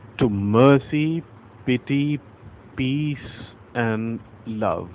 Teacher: the first syllable is unstressed and the second is stressed